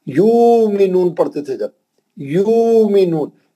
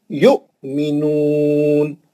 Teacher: हमजा पे जज़म में झटका देंगे